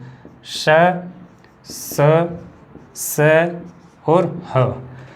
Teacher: जब हम इनका उच्चारण करेंगे तो जो श्वास वायु है वो घर्षण के साथ एक साथ बाहर निकलेगी, तो इसलिए इन्हें हम बोलते हैं संघर्षी व्यंजन।